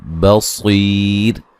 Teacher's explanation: وقفاً را کو باریک پڑھیں گے